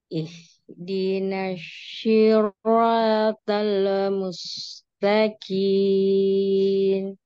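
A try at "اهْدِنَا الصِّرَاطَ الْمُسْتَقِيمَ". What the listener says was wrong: Soalnya jangan mantul. Ihdinas siratal mustaqim. Ihdinas siratal mustaqim.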